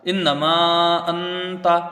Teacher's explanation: انتا میں یہاں اخفا ہوگا، نون ساکن کے بعد حروف اخفا کا تا ہے